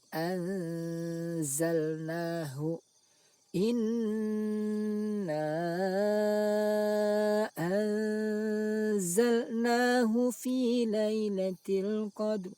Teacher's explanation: Contoh bacaan ikhfa berupa nun sukun bertemu huruf zai. Cara membacanya, suara nun sukun dibaca samar dan dengung.